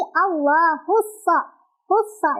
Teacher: alif lamnya tidak dibaca, melainkan kita baca langsung ke huruf syamsiahnya yaitu shad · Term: alif lam syamsiah